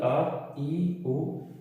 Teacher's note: निर्नुनासिक वो स्वर होते हैं जिनको उच्चारित करने में केवल मुंह से हवा निकलती है, नाक से हवा नहीं निकलती है